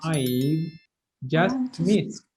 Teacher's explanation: d after unvoiced sounds pronounced as t